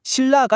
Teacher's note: 칼날처럼 앞에 리을이 있으면 뒤에 있던 니은이 리을로 바뀌어서 칼날이 되고요. 반대로 신라처럼 뒤에 리을이 있으면 앞에 있던 니은이 리을로 바뀌어서 신라가 됩니다. 결과적으로는 언제나 릴릴 이렇게 부드러운 소리가 되는 거죠. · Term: 유음화